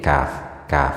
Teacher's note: ke agak ke atas lalu agak ke bawah sedikit kaf kaf Kaf kaf ada sedikit ngecesnya karena punya sifat hames